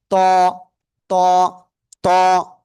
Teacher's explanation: জিহ্বার আগা উপরে দিয়ে দাঁতের গোড়ায় লাগান, লাগান, লাগান, লাগিয়ে একটু মোটা আওয়াজে উচ্চারণ করতে হবে। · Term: ত অক্ষরটা